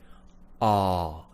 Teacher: I'm just slightly pushing the tongue down, but the middle of it is going all the way back. Mouth nice and big.